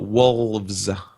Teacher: I'm not going to pronounce the L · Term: Ohio pronunciation